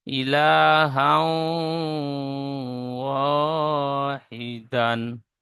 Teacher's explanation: হার উপরে দুজাবার এসেছে, দুজাবারটি তানবিন, তানবিনের পরে ইউমিনের 4টি অক্ষরের মধ্যে ওয়াও এসেছে, তাই তানবিনকে একালি পরিমাণ গুণনা করে পড়তে হয়। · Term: ইদগামে নাকিস